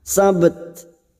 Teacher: Dua huruf ini mempunyai sifat yang berbeda, yaitu huruf ba, huruf qalqalah pada saat disukun yaitu memantul sab, dan ada huruf ta yang diwakafkan. Namun huruf ta memiliki sifat hamz dan siddah. Maka pada saat dibaca sukun atau diwakafkan bunyinya sabt. Ashabas sabt, memantul dan huruf ta hamznya harus terasa.